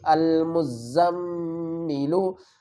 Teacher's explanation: حمزہ لام زبر ال، میم زا پیش مز، المزا، میم زبر زم، میم زیر می، المزمی، لام پیش لو، المزملو۔ دیکھیں میم مشدد آ گئی تو یہاں پر ہم غنہ کریں گے